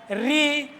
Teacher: ऋ इसका भी उच्चारण मूर्धा से होता है।